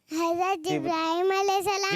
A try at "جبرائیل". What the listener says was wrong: جبرائیل بولے. میم نہیں, جبرائیل. کیا ہے؟